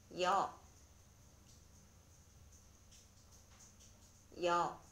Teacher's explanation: 모음 여는 먼저 이 음으로 약하게 시작해서 그 후에 곧바로 어 음으로 끝내면 나는 음이 바로 여입니다. 이때 주의할 것은 이와 어를 한 번에 발음해야 합니다. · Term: 이중모음